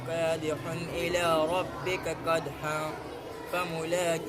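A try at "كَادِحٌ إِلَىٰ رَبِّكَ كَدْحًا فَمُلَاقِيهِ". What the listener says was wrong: یہاں پر دیکھو دال پر قلقلہ کرو, دال پر قلقلہ.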